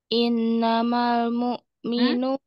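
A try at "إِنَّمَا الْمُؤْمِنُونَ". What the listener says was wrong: Nah, mustadada disempurnakan dulu.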